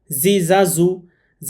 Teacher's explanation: সামনের নিচের দাঁতের আগা থেকে শীষ সহ পড়তে হয়। সামনের নিচের দাঁতের আগার সাথে জিহবা লাগিয়ে এটি উচ্চারণ করতে হবে।